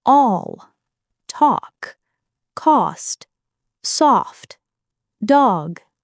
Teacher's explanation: This is the rounded a sound. The lips round slightly and the sound feels open and relaxed. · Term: rounded ah sound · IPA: /ɒ/